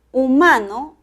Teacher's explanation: humano el acento prosódico está en la sílaba ma en la segunda